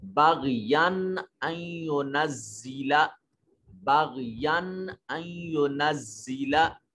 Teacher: یہاں اظہار ہو رہا ہے یا کو یا کے میں جو نون پیدا ہو رہا ہے اس کو واضح کر کے پڑھیں گے